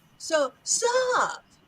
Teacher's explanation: you'll notice that my pitch goes up on up. So sup.